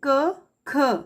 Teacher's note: तो कंठ से बोली जाने वाली ध्वनियां क और ख हैं